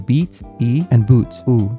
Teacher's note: English has those pure vowel sounds in words such as beat, E, and boot, U.